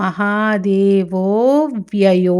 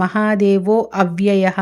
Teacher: పశుపతిర్దేవో మహాదేవో అవ్యయః, కానీ సంధి కలిసి అది మహాదేవో వ్యయో. అక్కడ మహాదేవో అవ్యయః అని పలకూడదు, కలిపి మహాదేవో వ్యయో